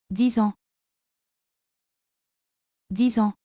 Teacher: For example, to say 10 years old is >> the X is pronounced Z because it links with the vowel